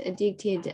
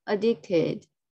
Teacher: the stress is on the second syllable, dick. Addicted.